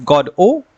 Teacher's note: some opt for stressing the first syllable that is god o which emphasizes the names linked to god